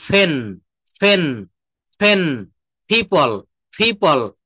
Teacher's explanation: অষ্ঠ ধ্বনি বা দুই ঠোট দিয়ে উচ্চারিত যে ধ্বনি